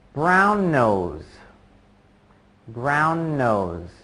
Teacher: you just kind of let that n sound at the end of brown hang there